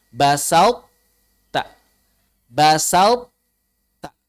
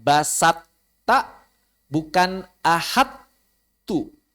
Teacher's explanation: Idgham naqis itu sifat itbaqnya masih tersisa. Sehingga kita baca basa masuk ke ta, basat, tapi taknya diitbaqin.